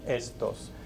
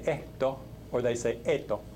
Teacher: In many dialects of Spanish, they say esto or they say eto, and the S's disappear if they're at the end of a syllable or at the end of a word. In Mexico, that does not happen.